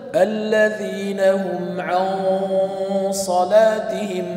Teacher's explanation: uni ihfosidagi g'unna burundan keladigan g'unna qalin qilindi · Uni ixfosidagi g'unna, burundan keladigan g'unna qalin qilindi. Natijada allazina hum an solatihim desangiz, bu to'liq ixfodagi g'unna qalinligi bo'lmaydi.